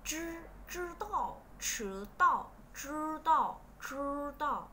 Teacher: là cong lưỡi lên, chư không bật hơi nha